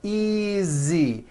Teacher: the S is like a voiced Z